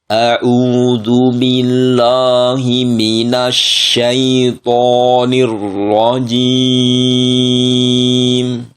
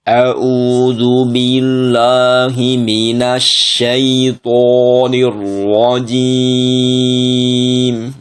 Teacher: attaawud itu dibaca ee tafhim pada semua huruf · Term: tafkhim